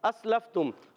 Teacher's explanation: हमजा को सीन से मिलाना है। सीन बारीक है। सीटी वाला है · اسلفتم، حمزہ کو سین سے ملانا ہے، سین باریک ہے، سیٹی والا ہے